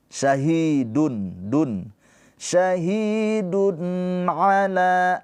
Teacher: Izhar halqi. Dibaca tanwinnya ini tidak samar tapi dengan jelas.